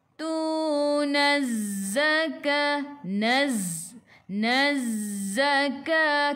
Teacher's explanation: Alif lam syamsiyah, lam tak sukun selepasnya ada sabdu, terus tekan ke dalam zai. Ingat huruf zai sifat hurufnya safir, kena bunyikan bunyi lebah.